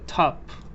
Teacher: in North America the single o is pronounced ah